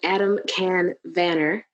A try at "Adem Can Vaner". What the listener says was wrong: It's actually pronounced Jun, but that's fine. My second name. Vaner, exactly.